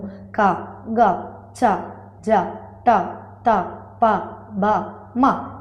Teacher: వీటిని నేను పలికేటప్పుడు చాలా తక్కువ శ్వాసతో పలుకుతున్నాను. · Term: అల్ప ప్రాణాక్షరాలు